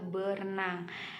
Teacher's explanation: hilangnya bunyi R yang ada pada prefix ber dalam proses prefiksasi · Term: pelepasan fonem